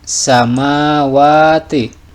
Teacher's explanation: ini adalah mad asli sebab ada fathah berdiri, panjangnya 1 alif atau 2 harokat